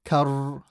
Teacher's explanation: When you say the ra, you should hear a vibration, kar, like that. And should stop on it for about a second or two to make sure you can say the double.